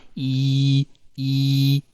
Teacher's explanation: अगर आप कहें ना ई, आप देखेंगे आपके लिप्स थोड़े से जो है वो वाइड हो जाएंगे, स्प्रेड हो जाएंगे